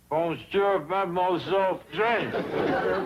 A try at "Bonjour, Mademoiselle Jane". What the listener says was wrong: That's very good, except for the mwah sound. Must be soft. Mwah. Watch my lips closely. Mwah.